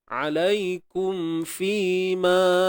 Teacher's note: Mim mati bertemu fa. Ni hukumnya izhar syafawi. Jelaskan mim mati ni. Mim yang ada simbol sukun kan.